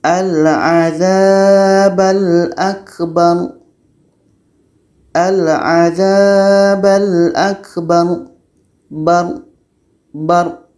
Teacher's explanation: ada Ro mati sebelumnya ada huruf yang berbaris di atas dan terletak pada akhir ayat atau akhir bacaan maka ini kita baca tebal